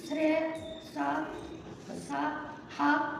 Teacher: గాలి ఊదుటూ పలుకుట, దీనిని ఊష్మాలు అని అంటాము.